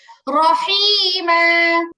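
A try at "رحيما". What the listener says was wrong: হা পরিষ্কার হচ্ছে না আপু, হা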